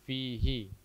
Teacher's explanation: semestinya dia dibaca pendek. Karena apa? Karena sebelumnya huruf berharokat sukun.